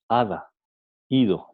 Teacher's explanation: En la articulación del alófono fricativo, La lengua no cierra totalmente el paso del aire. Por tanto, el aire sale por un estrecho conducto que deja la lengua, produciendo una suave fricción. Ada, ido. Entonces, si hablamos de la D fricativa, entonces la lengua, a diferencia de la D oclusiva, no cierra totalmente el flujo del aire. · Por ejemplo, al pronunciar ada, nosotros no decimos ada o ido, decimos ada y ido. Entonces la lengua no llega a tocar los dientes superiores.